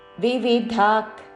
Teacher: విసర్గ తర్వాత క తో పదము ఉన్నది కాబట్టి శ్వాస వదులుతూ చివరిన క లాగా ఉచ్చారణ